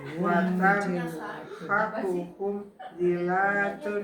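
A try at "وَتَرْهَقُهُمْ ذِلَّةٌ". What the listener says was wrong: Nah, itu kayak diputus. Kan kadang-kadang suka kita suka di kayak disentak. alam taro, alam tar kayak itu kan kayak disentak tuh. Jadi kita lah bacanya emang lebih lembut sih nanti.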